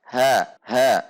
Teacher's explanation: Selanjutnya kaf kasrah ki, 1 harokat, ha fathah 1 harokat, ha tidak dibaca ha, tetapi ha dari dasar tenggorokan, hampir mirip sekali dengan huruf ha bahasa Indonesia